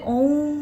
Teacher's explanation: ओ को अधिक लंबा खींचकर किया जा रहा है, तो वो प्लुत स्वर कहलाएंगे।